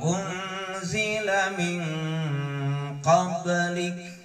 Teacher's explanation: ba adalah termasuk huruf qalqalah, yang mesti ketika dia disukun, ketika dia dimati, dia akan memantul. Jadi harus dipantulkan.